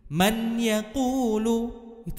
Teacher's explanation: contoh yang salah karena bunyi Nun sukunya masih terdengar jelas